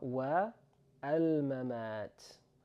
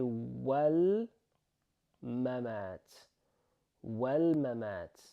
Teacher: we're going to join these two words together, which means we're going to remove, in this particular case, the A sound. So we're going to say wal mamat.